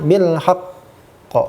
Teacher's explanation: kalau berada di terakhir dan mengandung tasydid ada sedikit saktahnya